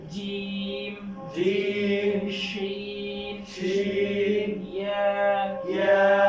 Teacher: 6 number মাখরাজ 6 নম্বর মাখরাজ জিহ্বার মধ্যখান জিহ্বার মধ্যখান বরাবর উপরে তালুর সঙ্গে লাগিয়ে